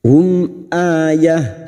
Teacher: mim sukun bertemu Hamzah Idhar syafawi mim sukun dibaca jelas tanpa mendengung